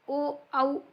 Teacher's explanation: ओ औ हे जे आहेत ते कंठोष्ट मध्ये येतात